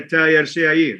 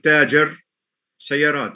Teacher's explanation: The ja sound has changed to ya